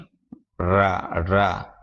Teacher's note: நாவின் நுனி ர, ர, நாவின் நுனி இர் என்று சொல்லக்கூடியது. நாவின் நுனி மேல் அன்னத்தின் முதல் பகுதியை தொட்டு வருடுவதால் அந்த ரகரம் தோன்றுகிறது. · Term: இடையின ரகரம்